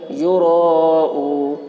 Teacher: واو ساکن سے پہلے پیش ہے، واو مدہ ہوا، اس لیے واو مدہ کو ایک الف کے برابر کھینچ کر پڑھیں گے۔ یوراؤ، حرف مد کے بعد سکون وقف کی وجہ سے ہے، اس لیے مد عارض وقفی ہوا، اس میں طول، توسط، قصر تینوں جائز ہے، طول اولا ہے، پھر توسط، پھر قصر کا مرتبہ ہے۔